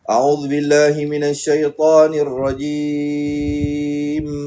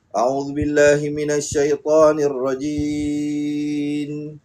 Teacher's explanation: Iaitu apabila bibir bawah bertemu dengan bibir atas. Bibir bawah tuan-tuan dan puan-puan bertemu dengan bibir atas ditutup rapat barulah sempurna makhraj huruf mim. Ramai orang tersilap di situ.